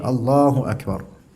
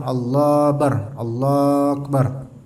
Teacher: Tadi Allahu Akbar. Akbarnya, hamzahnya kedengaran. Juga kafnya, kaf yang mati ini kedengaran. Bukan Allah Akbar.